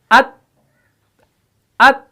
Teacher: अब हरफ ता है, सेम ऐसे ही जैसे हमजा ता जबर अत अत। जुबान का जो सामने वाला जो सिर्रा है, नोक जो है, ये सनाया उलिया की जड़ों से लग जाती है। अत, अत, आवाज भी फौरन बंद और सांस भी बंद, सांस बाहर नहीं छोड़ा, अत, अत, तो ये शिद्दत है, तो इसके अंदर दबाव पैदा हो गया।